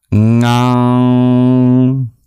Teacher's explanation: Finally, there's the guttural nasal, like the NG sound in English. Ngam. These are all produced, this row, in the back of the throat.